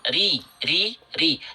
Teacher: Bedakan dengan huruf R. Kalau R getarannya banyak, kalau huruf ro getarannya sedikit. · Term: takrir